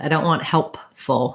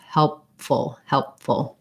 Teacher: want help full it causes an interruption in the flow so you close your lips for the p and then you just release into the f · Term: stopped p